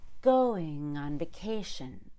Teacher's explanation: everything between go and k is squeezed going on vacation but i'm still making a very clear low pitched quiet ng